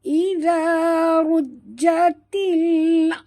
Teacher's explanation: za jaga makhrajnya di hujung lidah